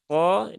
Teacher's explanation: yang ketiga ada huruf q tadi sudah ya qo Dia ee diucapkan dengan menaikkan pangkal lidah bukan dengan menggelembungkan pipi atau dengan majukan bibir